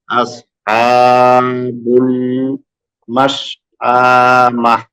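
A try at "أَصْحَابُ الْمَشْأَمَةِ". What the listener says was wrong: মাস টানটা হবে না। মাস আমাহ।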